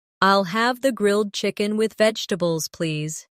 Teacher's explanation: The main stress is on grilled chicken and vegetables.